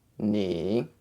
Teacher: you want to go a little bit lower in frequency from your neutral flat tone and then dip down and up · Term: dipping tone